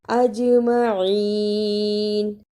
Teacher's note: جیم جزم کی صورت میں حرف قلقلہ ہے، یعنی اس لفظ کو ہلا کر ادا کرنا ہے